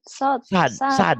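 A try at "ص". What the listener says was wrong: Ini sad kan. Nah, sad. Padahal yang benar itu mendekati adalah sholat, bukan salat. Makanya orang sebenarnya kadang-kadang orang-orang tertentu yang pakai Latin bilang salat, bukan sholat. Ya, itu sod.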